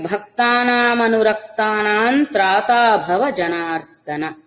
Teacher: భక్తానామనురక్తానాం ఇక్కడ వచ్చిన అనుస్వరం నకారంగా మారుతుంది. తర్వాత తకారం అనే శబ్దం తకారంతో శబ్దం ఉంది కాబట్టి భక్తానామనురక్తానాం త్రాతా భవ జనార్దన.